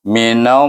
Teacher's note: Mi, kalimah mim bunyinya mi, kalimah na, nun bunyinya na, tetapi dia bertemu dengan nama Allah, maka kita idgham syamsikan dia dengan lam sana. Jadi lam kena baca dengan tebal sebab sebelum nama Allah jalallah, hukum jalallah, iaitu dia baris di atas, kena baca dengan tebal. · Allah itu 2 harakah saja. Baru betul bunyinya. Kalau kita bunyi minallahi, laju je tu tak boleh.